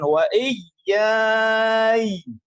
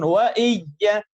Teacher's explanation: Biasa sukun wa iyya. Sedangkan ya yang pertama harus ditasdid tekan.